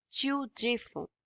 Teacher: For conjugating it with tu, we would drop this re from the end and we would add s here. So the ending ds is not pronounced, so the only pronunciation is this one.